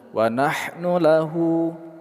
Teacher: Hu kita panjangkan dua harakat, mad shilah qoshiroh.